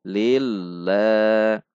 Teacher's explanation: Lille ada tekanan karena tasydid dengan sifat bainiyah huruf lam